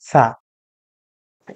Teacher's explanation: এই সা এর কথাই কিন্তু আপনাদেরকে এতক্ষণ বলছিলাম, যে সাটা পাতলা করে উচ্চারণ করতে হবে। উপরে দাঁতের আগা এবং জিহ্বার আগাটা মিলিয়ে পাতলা করে বাতাস ছেড়ে দিতে হবে।